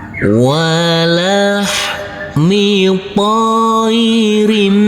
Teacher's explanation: Kalau huruf mim yang pertama ini bacaan idgham bi gunnah karena sebelumnya ada tanda baca tanwin, tanda baca kasroh tanwin yang bertemu dengan huruf mim yang bertasydid. Nanti tanwinnya kita hilangkan langsung masuk ke huruf mim.